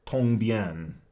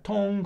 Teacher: tong, first tone, and bien, fourth tone